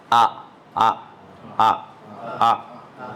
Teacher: حمزے کا ساؤنڈ جو آتا ہے کہاں سے آتا ہے؟ آخری حلق سے آتا ہے۔ آ آ آ آ یہ ہے حمزہ۔